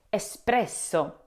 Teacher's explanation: But in Italian, there is no X sound. The E S at the beginning should sound like the start of escape. A clean S, not X. The P follows directly, so the start should be smooth and quick.